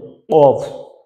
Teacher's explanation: আপনি যদি জিহ্বার গোড়া থেকে বলেন অফ তাহলে কফের সঠিক উচ্চারণটা হয়ে যাইতেছে